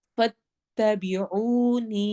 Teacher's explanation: फत्तबी लंबा नहीं होना चाहिए, ऊ वाव मद्दा होगा, नी या मद्दा होगा